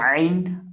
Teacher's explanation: आइन इसको हलक के दरमियान से अदा करेंगे जहाँ से हा को अदा करते हैं